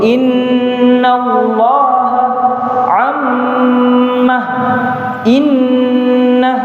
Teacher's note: Jadi ketika dibacakan nun dan mim yang bertasyd itu dengungnya agak lebih ditekankan. Innallaha dibawa ke hidung. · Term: nun dan mim yang bertasydid